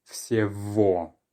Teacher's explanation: The letter G, it turns out, is often changed to more of a V sound when it's in between two vowels. So because we have Y, then G, and then O, that becomes V.